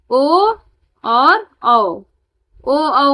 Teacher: ओ औ का उच्चारण स्थान क्या होता है? कंठ और ओठ होता है